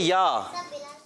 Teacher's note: زبان کے درمیان اور تالو کے درمیانی حصے سے ادا ہوتا ہے یا